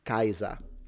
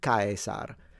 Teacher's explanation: I believe you don't pronounce the R at the end and you pronounce the Z in a fricative way and you say Z.